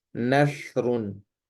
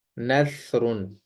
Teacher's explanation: تو سا کی آواز باریک ہوتی ہے، اور دوسری چیز یہ نرم ہوتی ہے، اس کو بہت نرمی سے ادا کیا جاتا ہے